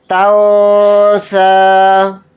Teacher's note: فَلَا تَنسَىٰ، یہاں پر اخفا کا قاعدہ ہو رہا ہے کیونکہ نون ساکن کے بعد سین آ رہا ہے، اور سین حروف اخفا کے حروف میں سے ایک حرف ہے۔ نون کی آواز کو ناک میں چھپا کر اخفا کے ساتھ پڑھیں گے